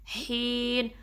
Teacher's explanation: ہا کو درمیانے حلقے سے نکالنا ہے اور 2 کاؤنٹ اسٹریچ کرنا ہے، پھر آخر میں جو نون ہے اس کو واضح کریں گے.